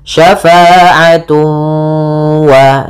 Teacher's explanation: cara membacanya ditahan suara wawnya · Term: idgham bi gunnah